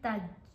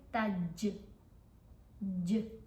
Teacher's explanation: آپ نے ان کی آواز کو تھوڑا سا ہلانا ہے، ایسا فیل ہوگا جیسے منہ میں آواز ٹکرا کے واپس آ رہی ہو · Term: کلکلا